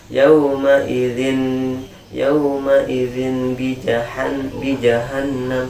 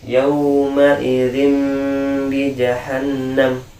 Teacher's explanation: Kemudian yang tanwin dan nun sukunnya dirubah menjadi mim, dan tidak boleh terlalu dirapatkan kita punya bibir. Nah, macam ada rongga ya.